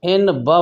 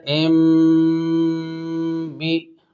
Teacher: اب یہاں پر تنوین ہے، تنوین کے بعد با ہے، تو تنوین کے نون کو میم سے بدل کر غنہ کے ساتھ ادا کریں گے، اس لیے کہ تنوین کے بعد با آ رہا ہے۔ لہذا نون ساکن اور تنوین کے بعد اگر حرف با آ جائے تو نون ساکن تنوین کو میم سے بدل کر غنہ کے ساتھ ادا کریں گے۔ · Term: اقلاب